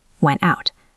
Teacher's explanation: the t at the end of out, it is at the end of the sentence. So, it's a stopped t.